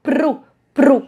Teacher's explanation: aquele R vibrante prolongado